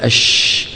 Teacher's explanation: الشين فيها صفه التفشي وانفردت بها التفشي هو الانتشار انتشار الصوت لما تقول الش بتلاقي الصوت ايه عم ينتشر في الفم